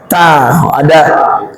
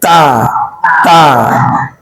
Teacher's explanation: ada percikannya karena hamas dia